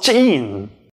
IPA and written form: tʃ'ín (small)